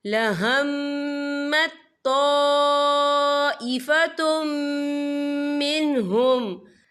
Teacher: और आगे देखें ताइफतुम, या देखिए ता के पर तनवीन है, तनवीन के बाद जो है मीम आ रहा है और मीम जो है रूफ़ यरमलुन में से है, तो यहाँ पर इदगाम होगा, तो हम इसे गुन्ने के साथ पढ़ेंगे